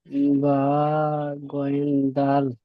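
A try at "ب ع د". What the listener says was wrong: জি না, গাইন হলে একটি নোক্তা হতো। জি, আইন 3 আলিফ টান, বাও 3 আলিফ টান হবে, বলেন।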